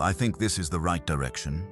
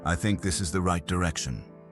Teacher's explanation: A downward finish gives the sentence completion. It does not need to be harsh.